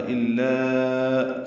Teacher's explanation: الا میں حمزہ کو لام سے ملانا ہے، لا الف مدہ ہے، مد منفصل بنے گی، آگے حمزہ آ رہا ہے، الا چار حرکات لمبا کریں گے